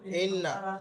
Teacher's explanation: তো দেখেন ইন্না নুন মুশাদ্দাদ এটা হারাকাত নুন মুশাদ্দাদ হারাকাত আছে নুনের উপরে টান হবে না কিন্তু এক আলিফ পরিমাণ গুণনা হবে যেহেতু মুশাদ্দাদের কায়দা নুন মুশাদ্দাদ এবং মুশাদ্দাদ গুণনা করা